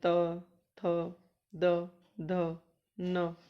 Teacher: जीभ हमारी दांतों को छूती है